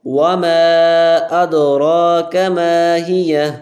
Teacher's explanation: ماں پہ چھوٹی مد ہوگی، 3 حرف مقدار اس کو کھینچیں گے، واو پہ گول ہوں گے، وَمَا أَدْرَاكَ مَا هِيَ، وَمَا أَدْرَاكَ مَا هِيَ نَارٌ حَامِيَةٌ، نَارٌ حَامِيَةٌ، نَارٌ حَامِيَةٌ۔